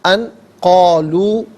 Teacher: ان قالو، ان میں نون ساکن ہے، نون ساکن کے بعد قاف حرف اخفاء ہے، تو نون ساکن کو اخفاء کے ساتھ پڑھیں گے، ناک میں آواز لے جا کر گنگنانا، اسے اخفاء کہتے ہیں